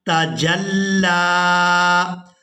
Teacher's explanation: جیم کو لام مشدد کے ساتھ ملانا ہے اور لام کو کھڑی زبر کی وجہ سے کھینچ کر ادا کرنا ہے